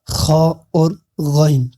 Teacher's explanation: یہ جو ہے خا اور غین یہ بھی حلق سے ہی نکلتے ہیں، لیکن یہ حلق کے اوپر والے حصے سے جو منہ کی طرف والا ہے اس سے نکلتے ہیں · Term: حروف حلقی